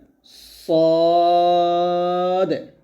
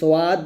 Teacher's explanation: সদ উচ্চারণ করার সময় ঠোঁট গোল যেন না হয়ে যায়।